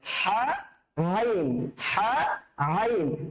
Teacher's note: আইন যেখান থেকে উচ্চারিত হচ্ছে, হাটাও ঠিক সেখান থেকে উচ্চারিত হচ্ছে। তাহলে আইন আইন আইন আইন অনেক প্র্যাকটিস করতে হবে।